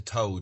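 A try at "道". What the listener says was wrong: Actually, the word Tao, it's pronounced with a D actually, is it means in Chinese, it means way or path.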